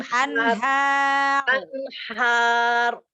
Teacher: Ro-nya ditebalkan karena ro sukun karena wakof. Sebelumnya huruf yang berharokat fathah, maka ro dibaca mufhim Tebal.